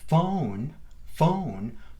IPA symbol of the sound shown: oʊ